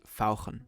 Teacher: German has the special ach sound, which sounds very throaty.